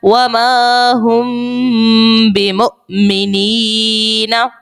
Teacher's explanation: میم ساکن کے بعد با اخفاء شفوی کا قاعدہ لگائیں گے اور غنہ کریں گے